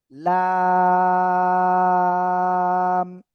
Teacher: জিহ্বার আগার কিনারা উপরে মাড়ির দাঁতের গোড়ার সাথে লাগিয়ে অক্ষরটা উচ্চারণ হবে এবং চার লিপটা নিয়ে উচ্চারণ করতে হবে।